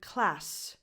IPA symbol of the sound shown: s